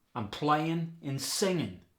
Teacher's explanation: Of course, there's dropping the G in the ing. Playing and singing become I'm playing and singing.